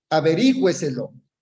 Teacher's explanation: el mayor acento de voz en la cuarta sílaba empezando de la derecha a la izquierda, es decir, empezando desde el final de la palabra. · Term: sobresdrújulas